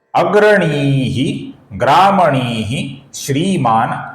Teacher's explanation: ग्रामणी का जो विसर्ग है इसके आगे श्री का श आने के कारण विसर्ग का हल्का सा श उच्चारण होता है।